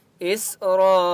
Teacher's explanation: سین کے اوپر سکون ہے، حمزہ کو سین کے ساتھ ملائیں گے۔ را، الف مد زبر را، را کے اوپر بڑی مد ہے، 4 سے 5 الف کی مقدار کھینچ کر پڑھیں گے اور را کو پر پڑھیں گے۔